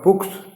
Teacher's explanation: एक शब्द है बुक, तो अंत में का आता है ये, तो ये अघोष है। तो जब इसमें एस लगेगा, प्लूरल बनेगा बुक्स, तो ये जो एस है वो सा बोला जाएगा